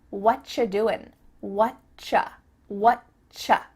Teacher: And actually, we've cut out completely the word are, and the word you just becomes cha.